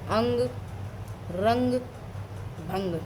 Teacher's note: नाक से अधिक सांस निकलती है और मुख से कम सांस निकलती है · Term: अनुस्वार